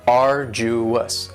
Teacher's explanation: arduous has 3 syllables, and the stress is on the first syllable. Arduous. Now, you don't hear that D sound that much.